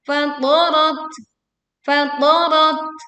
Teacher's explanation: Ada huruf tak sukun, memiliki sifat hamas, desisan angin keluar saat tak sukun dibacakan.